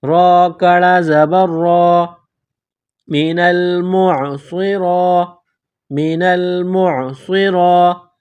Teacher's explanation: ایک الف کے برابر کھینچ کر پڑھیں گے، را کڑا زبر را کو موٹا پڑھیں گے